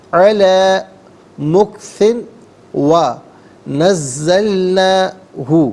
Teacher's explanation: مکثن میں سا کے نیچے 2 زیر کی تنوین ہے اور اسے واو کے ساتھ ملائیں گے، واو کی آواز کو غننے کے ساتھ ادا کریں گے۔ یہاں یرملون کا جو قاعدہ ہے وہ اپلائی ہوگا۔